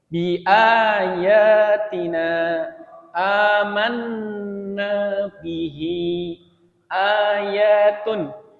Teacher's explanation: Panjangnya adalah 2 harokat atau 1 alif cukup. Ya, panjangnya tidak panjang banget, tapi mad badal ini hanya mengganti aja, mengganti tadi hamzah yang sukun itu diganti menjadi alif sehingga panjangnya menjadi 2 harokat.